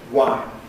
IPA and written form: waɪn (wine)